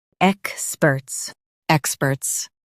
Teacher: Stress ek and keep spurts smooth.